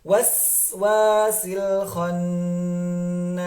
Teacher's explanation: ketika kita bertemu dengan huruf sin sukun, ada aliran sebentar, aliran sedikit